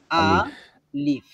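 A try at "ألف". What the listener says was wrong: আলিফ। আলিফ। আলিফ। এটা লম্বা হবে না, দ্রুত হবে।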